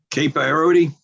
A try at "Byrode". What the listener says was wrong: It's Kate Byrode. The E is silent. Some ancestor stuck it on.